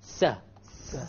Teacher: The ninth makhraj, the ninth area of the tongue, is the tip of the tongue as it connects with the gum behind the upper incisors and a slight gap. So this is the tip along with the gum behind the teeth, but there's a slight gap between the gum and the teeth. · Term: Sin